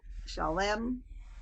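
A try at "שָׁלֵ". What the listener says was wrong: No, chalet. Yes, you're adding an M at the end. It's just chalet.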